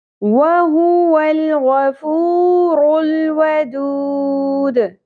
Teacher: آخر میں دال ساکن پہ قلقلہ ہوگا اور مد عارض وقفی ہوگی